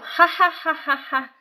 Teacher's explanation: you find nasality. In posed laughter, that kind of ha ha ha ha ha sound that you could not do if you were laughing involuntarily.